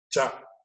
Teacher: The tongue touches the upper portion of the palate.